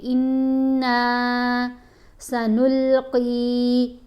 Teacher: نون کے اوپر غنہ بھی کریں گے اور نون کو 1 الف جتنا لمبا بھی پڑھیں گے